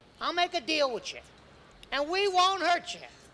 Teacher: You'll hear native English speakers often change the y sound for a ch sound when it is after a t or a th. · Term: connected speech